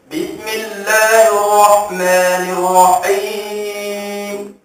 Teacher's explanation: Cantik suara dia tapi dia sengaja terakkan suara atau menggaraukan suara ketika menyebut huruf ha sehingga bertukar kepada huruf ain.